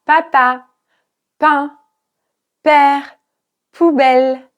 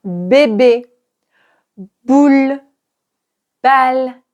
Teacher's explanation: Ensuite, nous avons le B qui est très proche du P. La différence, c'est que les cordes vocales vont vibrer.